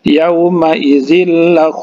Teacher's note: huruf idghom bilagunnah jadi langsung dimasukkan saja